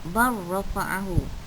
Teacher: Okey, huruf lam dan ra, lam wajib dimasukkan ke dalam huruf ra. Ya, tak perlu bunyikan lam. Terus saja sebut bar rafa'ahu, ya. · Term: idgham mutaqaribain